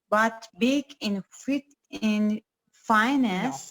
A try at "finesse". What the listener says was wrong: Finesse. The stress is on ness.